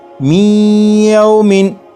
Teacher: یہ جو آواز ہے می ای، یہی ادغام ہو رہا ہے، اور ادغام اس طرح کے نون ساکن کو یا میں شامل کر کے پڑھا جا رہا ہے اور غنہ کر کے پڑھا جا رہا ہے